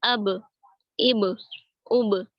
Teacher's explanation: یہ قلقلہ ہوگا ان میں کیونکہ یہ قلقلہ کے حرف ہیں اور ساکن ہیں